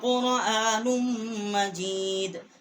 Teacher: بل هو قرآن مجید، نون جو ہے اس کے اوپر دو پیش ہے، ایک سیدھا ایک الٹا ہے، ہم نے نون کو میم کے ساتھ مشدد کیا ہے